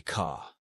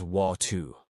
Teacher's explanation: in classic New York speech, the R disappears unless it's at the beginning of a word. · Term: The dropped R